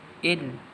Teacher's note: gunnah musyaddah dengung tahan 2 harakat